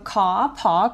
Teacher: R을 안 읽는 사람들이기 때문에 글자 R이 모음을 길게 늘리는 신호로만 작동을 하는 거예요. 그래서 소리가 아니라 표기 기호가 되는 겁니다.